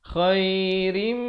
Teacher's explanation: asalnya rin, tapi bila datang mim jadi rim. Terus dengung, masuk beserta dengung 2 harakat.